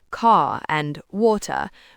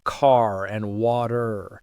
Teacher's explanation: We really put that R in there, often with a little curl of the tongue. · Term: being rhotic